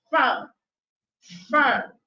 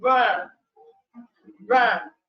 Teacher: the vocal cords are either far apart and do not vibrate as in front firm or they are relatively close and vibrate as in burn brand